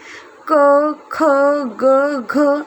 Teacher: क, ख, ग, घ इनका उच्चारण भी कंठ से